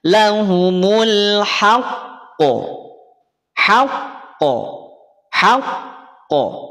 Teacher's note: Ditekan bukan berarti ditahan. Maka di lafaz haqqu cukup tekan baru pantulkan.